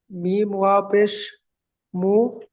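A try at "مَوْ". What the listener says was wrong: মিম ওয়াও জাবার আছে, পেশ নেই। মিম ওয়াও জাবার মাউ। মিম ওয়াও জাবার মাউ।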